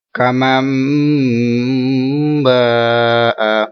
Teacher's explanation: ادھر اقلاب کا قاعدہ ہے، ٹھیک ہے، اس لیے ہم نے گنہ کیا. نون ساکن بحرف با ہے تو میم کی آواز میں گنہ ہوا